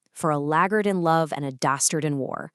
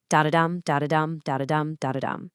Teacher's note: Scott uses a highly specific meter in parts of this poem called anapastic tetrameter. An anapest is basically a 3-beat pattern: unstressed, unstressed, stressed. Da-da-dum. And tetrameter means there are 4 of these patterns per line, giving us 12 syllables total.